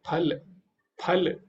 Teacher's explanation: फल, इसमें पूरा होंठ बंद होगा, वही शुद्ध उच्चारण होगा। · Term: औष्ठ्य